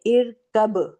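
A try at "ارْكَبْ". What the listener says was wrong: ابھی بھی آپ کا ہلکا سا را ہل رہا ہے, ٹھیک ہے. تو ارکب.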